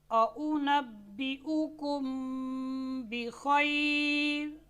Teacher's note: मीम साकिन के बाद बा आई है तो हमने मीम को उसके मखरज में छुपा कर पढ़ा है।